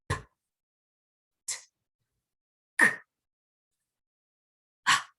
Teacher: So if I say p, t, k, h, those sounds move from the front to the back of the mouth